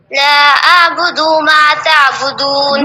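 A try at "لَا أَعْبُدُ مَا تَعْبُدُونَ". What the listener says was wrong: بدو نہیں، جسے ہم نے سورہ حمد میں بتایا تھا، یا کہیں پر بھی پیش ہو، زبر زیر ہو تو اس کو جلدی سے پڑھیں گے. ایک تو واضح پڑھیں. دیکھیے یہاں پر لا ہے پھر آ ہے، تو ہم دونوں کو ایسے نہ پڑھیں کہ ہم نے لا بدو کہا ہے، لا بدو نہیں لکھا ہے، لا اعبدو لکھا ہے.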